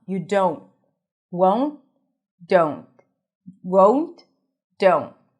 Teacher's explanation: Just like the won't at the beginning that had the long O as in go, don't has it as well.